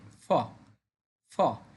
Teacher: উপরের পাটি দাঁত দিয়ে নিচের ঠোঁট টাচ করিয়ে আমরা বলবো ফ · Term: এফ ফর ফ